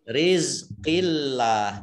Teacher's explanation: Allahnya dibaca tipis karena harokat di depannya kasroh. Rizqillah, tidak rizik.